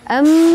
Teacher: Am mim bertasydid itu disebut dengan ghumnah. Maka teman-teman harus dingungkan.